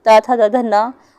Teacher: दांतों से जो निकलती है वो ता था दा धा ना।